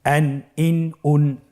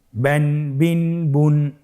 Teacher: প্রত্যেকটি উচ্চারণের শেষে দন্ত ন উচ্চারিত হচ্ছে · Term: তানবিন